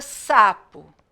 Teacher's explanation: Qual é a sílaba tônica de sapo é o sa